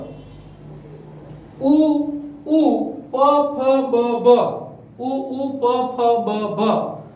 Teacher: હોઠ ભેગાઈ થાય અને હોઠ છે એ સંકોચાઈ જાય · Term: ઓષ્ઠ્ય